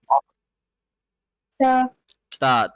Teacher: زبان کی ٹپ ہل پہ لگتی ہے